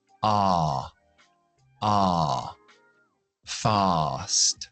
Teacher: rápido es con la a larga. Abrimos la boca.